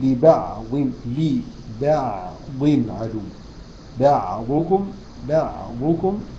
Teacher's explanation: فالعين رقيقه والباء رقيقه، الضاد فقط هي المفخمه